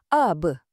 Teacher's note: Ia macam bunyi eko atau lantunan bila ba ada tanda sukun. Jadi, bukan sebut up dan berhenti, tapi ab. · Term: qalqalah